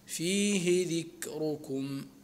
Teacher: والراء في ذكركم ترقق لورش وتفخم لحفص ولقالون، فنقرأها لحفص ولقالون فيه ذكركم، هكذا.